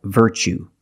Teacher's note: You see T-U-E as the second syllable. So the T is pronounced ch, like chicken.